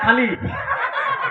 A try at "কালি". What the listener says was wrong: খালি নয় কালি কালি